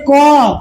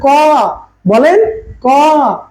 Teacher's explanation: দেখেন সরাসরি আমাদের গলা থেকে বা জিহ্বার গোড়া থেকে শব্দটা উচ্চারণ হয়ে চলে আসছে। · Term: জিহ্বামূলীয় বর্ণ